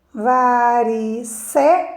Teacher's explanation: Eu não leio varicela, eu leio varicela. Então, a sílaba mais forte é o sé